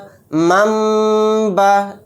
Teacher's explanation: اس طرح سے ناک میں تھوڑی دیر آواز کو روک کر غنہ کرنا ہے